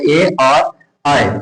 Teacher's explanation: कंठ और तालु एक साथ मिलाकर बोलते हैं। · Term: कंठ तालव्य